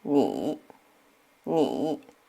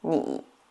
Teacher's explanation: You will notice it's not going straight down anymore like before. This time it's like a dip going down and then up. This is the third tone in Chinese.